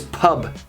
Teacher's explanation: we slightly swallow the b at the end of the word